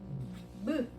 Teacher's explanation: 무 이렇게 발음하거든. 자, 미음을 발음할 때는 입 안이 관계하기보다는 어디가 훨씬 더 강조돼? 입술이 훨씬 더 강조되죠. 그래서 이렇게 입술 모양을 본다. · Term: 입술 소리